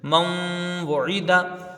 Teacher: نون ساکن کے بعد یرملون کا حروف یرملون کا واو ہے، یہاں ادغام مال غنہ ہوگا، ایک الف کی مقدار غنہ کریں گے ، واو کے اوپر پیش جلدی پڑھا جائے گا، عین کے